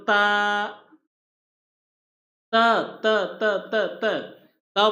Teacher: त बोल रहे हैं तो जीवा दांत के पास डंक मार रही है